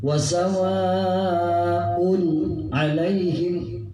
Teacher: Jadi bunyinya A-nya, U-nya jelas, kemudian langsung masuk pada A. Wasawa'un alaihim, nggak boleh panjang, tidak memohon untuk didengungkan. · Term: huruf izhar